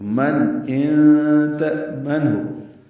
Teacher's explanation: من ان میں نون ساکن کے بعد حمزہ آنے کی وجہ سے اظہار ہے، ان تأمن میں نون ساکن کے بعد تا آنے کی وجہ سے اخفا ہے.